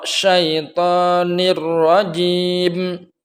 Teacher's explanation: suara nun mati dan tanwin dimasukkan kepada lam dan ra, huruf lam dan ra tanpa adanya dengung